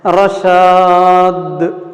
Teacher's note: آخر میں دال قلقلہ، تو تھوڑا متحرک کی طرح تلفظ کرنا